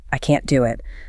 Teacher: The negative is hard and stressed.